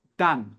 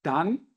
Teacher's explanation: Então, dan, aberto. A, bem aberto, tá bom? Sem nasalizar.